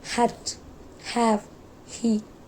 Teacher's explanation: It is voiceless glottal fricative sound. To produce sound, we simply need to push air out of our mouth while keeping our vocal cords relaxed and not vibrating. · To produce sound, we simply need to push air out of our mouth while keeping our vocal cords relaxed and not vibrating. Sound को produce करने के लिए हमें simply mouth के through air को push करना है.